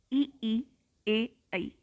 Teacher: जिह्वा के अग्रभाग को उठाकर जिन स्वरों का उच्चारण होता है वे है ई ए ऐ